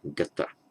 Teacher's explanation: what happens is that the N drops out, it becomes gata